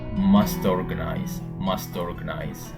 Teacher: we link the T to the next word when it start with a vowel